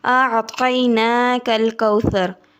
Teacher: طا کو جب زبان کی ٹپ کو دونوں دانتوں کے جڑ سے لگائیں گے تو طا ادا ہوگا۔ انا اعطینا، نون کو 1 الف کے برابر لمبا کرنا ہے، اس کے اوپر کھڑی زبر ہے۔